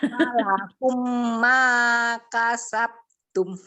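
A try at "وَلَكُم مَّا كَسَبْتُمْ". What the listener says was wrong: Oke, mim ketemu mimnya belum dengung lagi.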